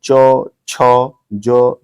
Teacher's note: च छ ज झ तो ये तालू को टच करता है